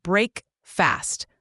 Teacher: the a in fast is a short uh sound not a long ah